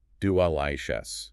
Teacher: The first syllable uses the schwa.